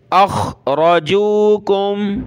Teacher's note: خا اور را کو موٹا کریں گے